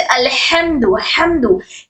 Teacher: हर्फ हलकिया है जो हमारे हलक के दरमियानी हिस्से से अदा होता है